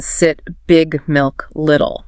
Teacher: For the short I or a think relaxation and speed. Your tongue is high but it's not tense. It's the vowel in sit big milk little.